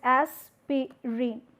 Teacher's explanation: this E sound is being omitted here. So, this is the process of elision.